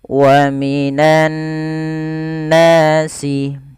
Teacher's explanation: tahan nunnya karena dia gunnah, bacaan gunnah ya teman-teman, tahan suara n-nya.